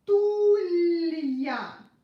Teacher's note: I pronounced ya like in the alphabet because of the soft sign, because it separates a consonant and a vowel.